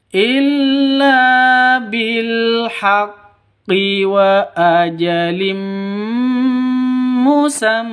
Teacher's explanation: wa ajalim di sini ada tanwin bertemu dengan mim cara bacanya masuk ke mim disertai dengung idgham bighhunah idgham masuk ke Mim bighhunah disertai dengung dua ketukan